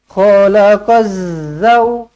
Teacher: alif lam syamsiah tak perlu dibaca lam ni lam ni tak perlu dibaca